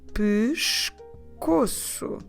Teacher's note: I'm stressing the middle syllable there, the second to last, co.